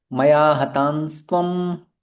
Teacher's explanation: तो म बोलते हैं ना, तो म बोलते तो होठ हमारे बंद हो जाते हैं, क्योंकि प फ ब ब म श्रेणी का है। तो ये अनुस्वार का उच्चारण म जैसा नहीं होता है, ये न होता है, जिसमें जिह्वा हमारी दांतों को स्पर्श होती है, न कि ओठ बंद होते हैं।